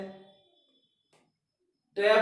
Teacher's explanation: अपनी जीभ है और टिथ रिज के लगी है टे में, और फिर हवा बाहर निकली है